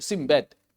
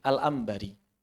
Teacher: Seluruh orang Arab sepakat nun ketemu ba pasti berubah jadi mim.